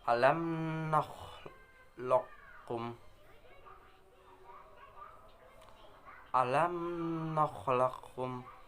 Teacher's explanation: Pada lafaz ini huruf qaf menghadap huruf kaf. Kedua huruf ini mempunyai makhraj yang berdekatan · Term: idgham mutaqaribain